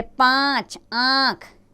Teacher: शब्दों को इसमें अनुनासिक की मात्रा लगी है जैसे पांच आंक इसका उच्चारण नाक और गले दोनों से किया जाता है